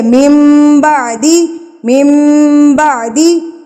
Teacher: اقلاب ہوتا ہے کہ نون ساکن کو ہم نے میم میں بدل دینا ہے